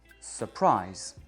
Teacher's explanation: La deuxième syllabe est prononcée plus aigu. Et ce qui est aigu, c'est vraiment la voyelle.